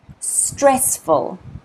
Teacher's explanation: you will notice that the first syllable is pronounced, is stressed